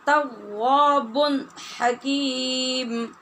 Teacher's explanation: نون تنوین ہے با کے اوپر اور اس کے بعد ہا حروف حلقی میں سے ہے، لہٰذا ہم نے یہاں اظہار کیا جس کا نام اظہار حلقی ہے۔ تواب حکیم وَأَنَّ اللَّهَ تواب